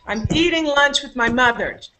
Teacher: my is not stressed my is what we call a possessive pronoun and in that sentence it was not stressed